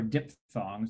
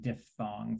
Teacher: diphthongs or dip songs you can say it both ways but the technically correct way to say it was with an f sound diphthongs it's a greek word so the ph says the sound